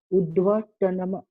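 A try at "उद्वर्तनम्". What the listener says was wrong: Vakara is there in between? Udva you are saying, from where you get the sound va. The letter which is not there, that the pronunciation of that letter is heard when you say. Udva you are saying. Udva, where is Vakara? Where is Vakara? There is no Vakara here.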